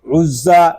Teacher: عین زا پیش عز، زا زبر زا، عزا، زا حروف صفیریہ میں سے ہے، اس میں سیٹی کی آواز آئے گی